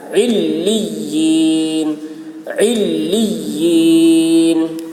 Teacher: عین حلق سے اور تشدید کے ساتھ بہت سختی کے ساتھ ملانا ہے